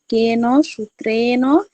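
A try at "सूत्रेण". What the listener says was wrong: সূত্রেণ নেই ওখানে, সূত্রেণ, সু দীর্ঘ আছে, সূত্রেণ।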